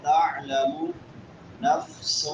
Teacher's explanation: عین حلق کے درمیان میں سے